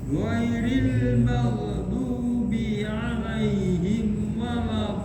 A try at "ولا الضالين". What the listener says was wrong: Dolin. Nah, itu ada tasdid, disempurnakan dulu. Dolin. Nah, penekanannya itu apa ya? Tetap sesuai sifatnya, tapi menekannya ada standar itu satu harakat ada satu harakat ya. Waladdallin. Nggih, dua ketukan.